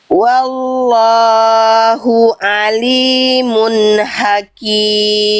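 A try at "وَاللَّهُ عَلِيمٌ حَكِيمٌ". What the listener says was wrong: Tapi lamnya tetap dua harokat, jangan kepanjangan. Lam pada lafaz Allahnya tetap dua harokat. Wallahu alimun hakim.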